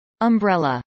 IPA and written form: əmbrˈɛlə (umbrella)